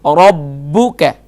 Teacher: با پر ذرا زور دیجیے کیونکہ با حرف مشدد ہے, ذرا سختی سے پڑھیں گے.